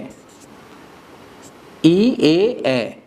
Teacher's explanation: ই এ এ উচ্চারণ করার সময় জিহ্বা সামনের দিকে আগায় যায়, এই জন্য এটাকে সম্মুখ স্বরধ্বনি বলে।